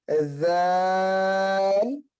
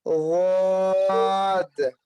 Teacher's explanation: पहले का मखरज है जुबान की नोक और सनाया उलिया का किनारा, मखरज नंबर 1। दूसरे का मखरज है हाफ़े लिसान और पहला मखरज नंबर 4। · پہلا ہے دونوں میں دوسرا فرق ہے پر باریک کا. پہلا والا باریک ہے دوسرا والا پور ہے